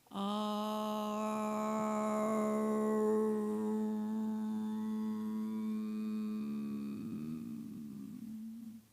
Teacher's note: The u is two times longer than the a and the m is two times longer than the u and the m is vibrating here.